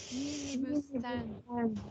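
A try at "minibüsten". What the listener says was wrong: O sea, es igual, minibustén, solamente que la E digamos, no es la misma E que ustedes escuchan, o sea, claro, es una E un poco diferente.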